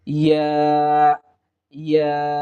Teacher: জিহ্বার মধ্যখান উপরের তালুর সঙ্গে লাগিয়ে দিলেই ইয়া হরফটি আমরা পেয়ে যাব